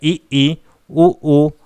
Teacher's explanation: संवृत स्वर वे स्वर होते हैं जिनके उच्चारण में मुख्य द्वार जो है लगभग बंद होता है, यानी कि जो मुख द्वार होता है, मुख्य द्वार नहीं बोलेंगे, जो मुंह का जो द्वार होता है आपका, वो लगभग पूरा नहीं लगभग बंद रहता है इनके उच्चारण में।